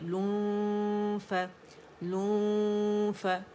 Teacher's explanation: کے جو ہے وہ اخفا اس کا کریں گے، ٹھیک ہے، نون کو چھپائیں گے، رائٹ اوے فا کے مخرج کے قریب جائیں گے، اوپر کے ہمارے 2 دانتوں کے ایجز، نچلے ہونٹ کا جو گیلا حصہ پیٹ ہے اس کے قریب ہو جائیں گے · غنہ فیل کریں ناک پہ، تھوڑی آواز منہ میں آتی ہے، زیادہ ناک سے